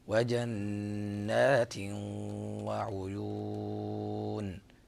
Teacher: فهنا النون مشددة مغنى فيها غنى بمقدار حركتين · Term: النون المشددة